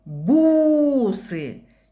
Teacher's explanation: Четче и дольше тянется в первом слоге буква У. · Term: ударный слог